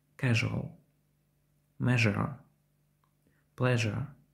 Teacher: відрізняться від англійського приголосного ш звінкістю і від українського ж м'якістю вимовляється як щось середнє між ж та ш